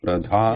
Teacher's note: note that it's a aspirate with the mahaprana. The breath has to come out when we say dha.